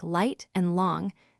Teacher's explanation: Then gradually speed up while keeping tongue tip on the gum ridge